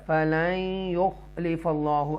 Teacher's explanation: قل اتخذتم عند اللہ عہدا فلن یخلف اللہ، ادغام ہے یہاں پر، نون ساکنہ کے بعد یا ہے حروف یرملون میں سے